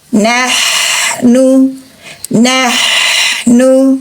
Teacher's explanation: dari tenggorokan bagian tengah